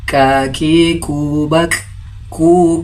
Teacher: Huruf kaf makhrajul hurufnya berada pada bagian lidah paling dalam langit-langit mulut. Pengucapannya seperti huruf K dengan keluarnya nafas.